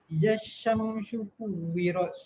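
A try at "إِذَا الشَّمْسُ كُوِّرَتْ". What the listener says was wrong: Syam dah betul, su tu jangan bagi bunyi shu. Su. Su.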